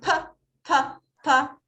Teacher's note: Si ustedes dicen p, p, p, no sienten que las cuerdas vocales vibran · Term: voiceless